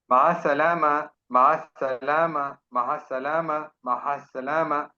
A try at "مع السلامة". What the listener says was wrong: H H نہیں ہے، ایچ نہیں ہے. مع السلامہ، مع السلامہ.